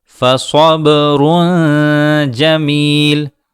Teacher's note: صا کے بعد با میں قلقلے کو واضح کریں، اور را کے بعد جیم آ رہی ہے جو حروف حلقی میں سے نہیں ہے، تو یہاں را میں اخفا ہوگا۔